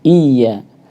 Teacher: i-nya harus jelas, iya bukan ya, tapi iya.